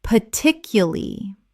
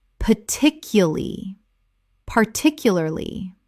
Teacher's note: Native speakers often drop the R in the final syllable and reduce the word considerably.